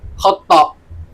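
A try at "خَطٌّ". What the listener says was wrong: Khotun. Khoto. Salah itu. Ini khotun beda. Khoto itu salah, beda. Khoto itu tanpa tasdid. Ini khotun. Tasdid, tak toknya tasdid. Ini khoto ini, khotoun. Salah. Ini khotun.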